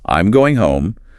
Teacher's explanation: Generally, we use falling intonation at the end of statements. I'm going home. The pitch drops.